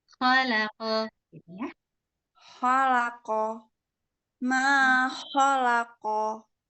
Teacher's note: Ada suara seperti suara ngorok gitu, tapi tidak terlalu kasar gitu ya.